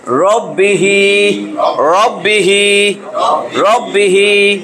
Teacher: এটা তাহলে রাব্বি যেন না বাইরে, রব র র র র, রব্বিহি, রব্বিহি। হা, হায়ের নিচে খারাজের এক আলিফ টান হবে। মদের হরকত পড়েছিলাম না, খারা জবর, খারাজের উল্টা পেশ, মদের হরকত এক আলিফ টানিয়া পড়িতে হয়, মধ্যে আসলি।